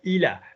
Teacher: There's got to be some nose in your a.